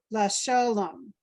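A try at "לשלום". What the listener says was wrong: And remember that that under that lamed, under the L, it's like the I in it. So it's le shalom.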